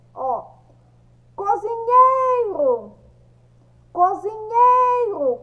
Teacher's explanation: Qual é o som mais forte? É o som do nhei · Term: sílaba mais forte